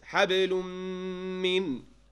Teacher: This is idgham بغنة in the letter meem with tanween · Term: idgham with ghunna